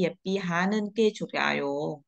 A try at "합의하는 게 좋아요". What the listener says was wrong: 하피, em đọc là happy, happy, 합의하는 게, 합의하는 게 좋아요. 합의,